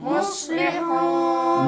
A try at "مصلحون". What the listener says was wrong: मुस नहीं पढ़ेंगे, क्या पढ़ेंगे? قالوا إنما نحن مصلحون